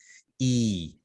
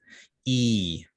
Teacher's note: We have the E as in beat, which again is a high tense front vowel. It is tense because you feel the tension here.